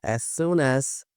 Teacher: como eles têm o mesmo som, você não precisa pronunciar duas vezes. A gente faz a junção desse som aqui, ficando as soon as. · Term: link